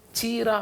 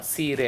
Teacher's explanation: ಎಲ್ಲಿ ಚ ಇದೆ, ಛ ಇದೆ ಮತ್ತು ಶ ಇದೆ, ಇದೆಲ್ಲವೂ ಸಾಕಾರ ಆಗ್ಬಿಡುತ್ತೆ